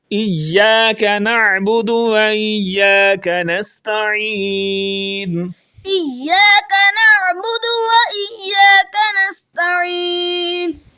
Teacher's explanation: عین کو اپنے مخرج یعنی حلق کے درمیان والے حصے سے ادا کرتے ہوئے آپ نے پڑھنا ہے۔